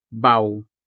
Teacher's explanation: the vowel A pairs with a semi-vowel W to create the diphthong, au, giving the final syllable a vowel-sounding finish.